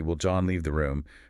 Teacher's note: the function indicator, the word order, the rising intonation, tells you I'm executing that raw content as a question.